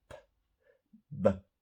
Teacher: It's the same sound. You do the same thing with your mouth. For example, p, b, but the b is voiced.